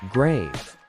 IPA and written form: ɡreɪv (grave)